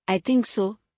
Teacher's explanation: the voice falls then rises. Used to show reservation, doubt, or contrast, I think so, downright arrow upright arrow, but I'm not sure.